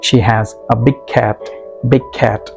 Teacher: Here you linked g and k, big g and cat k sound. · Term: link them